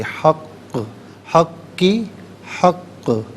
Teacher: قاف حرف قلقلہ ہے، جب اسے ساکن کریں گے تو آواز لوٹتی ہوئی محسوس ہونی چاہیے. دوسرا یہ کہ مشدد ہے تو جماؤ کے ساتھ پڑھیں گے، حق حق کی حق.